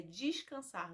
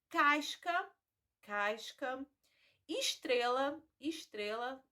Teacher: observem também essa essa substituição do e pelo I